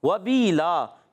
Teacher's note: وبیلا واو پر زبر ہے، حرکتیں نہیں کھینچیں گے، ہونٹ گول ہو جائیں گے